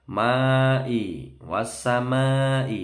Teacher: ma panjang bertemu hamzah dalam satu kalimat dibaca 5 harokat atau 5 ketukan. Ini mat wajib muttasil.